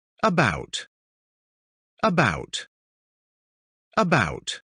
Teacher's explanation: pronunciamos como una A, pero sin hacer ningún movimiento ni de la lengua ni de ningún músculo de la cara